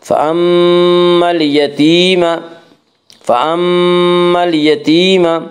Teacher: فأما اليتيم میم مشدد غنہ ہوگا، غنہ کی مقدار 1 الف ہے